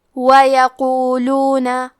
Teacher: قاف حروف تفخیم میں سے ہے، تو ہم یہ حرف کو موٹی آواز میں پڑھیں گے